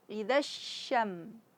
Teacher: Kemudian harus ada sh, karena shin bersifat tafashi. Apa itu tafashi? Menyebarnya suara. Idzasyam, jangan syam, jangan ditekan syam, tapi sekedar saja idzasyam, jangan syam, tapi idzasyamsu kuwirat.